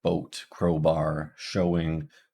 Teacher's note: starts at the O position and then it moves up a little bit